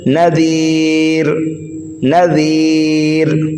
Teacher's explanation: اور اگر ہم نے یہاں پر وقف کر دیا تو دو پیش کو ہٹا کر یہاں پر جزم لگا دیں گے، پھر یہ را ساکن ہو جائے گا، اور را ساکن سے پہلے یا ساکن ہو تو را کو باریک پڑھا جاتا ہے